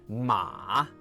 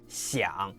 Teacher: this perfect valley curve, medium, down low, back up high. They teach 马, horse, with that full dip and rise.